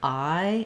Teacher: So it's some people call it long I. I prefer to call it I diphthong because we glide from the ah into the E. So just holding your vowel longer, I, and closing and relaxing as you say it will help you.